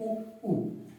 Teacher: तो ओष्ठ से जो स्वर उच्चारित होते हैं वो होते हैं उ उ।